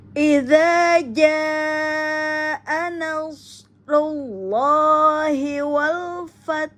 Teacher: Keluarkan ha pada tengah tenggorokan karena ada hak mustahak ha yang harus dikeluarkan hamasnya di saat ha kita sukunkan.